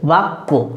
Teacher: জফালা একটা দেখো একটা বর্ণকে দুবার করে দিয়েছে, যে বয়াকার কয় জফালা বাক্য। জফালা নিজে উচ্চারিত হয়নি, কিন্তু এ কী করেছে কটাকে দুটো করে দিয়েছে